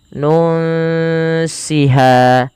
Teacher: bacaan ikhfa yaitu disamarkan bunyi nunnya kepada huruf Sin nun siha ha ada mad thabi'i.